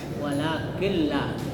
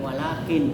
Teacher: Jadi nunnya itu diganti menjadi lam. Jadi dimasukkan walakilla.